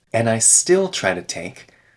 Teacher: we remove the D in and I still try to take.